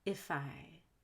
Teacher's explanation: For example, if I say, I want to link the F and if to the I. If I. So it sounds like fi.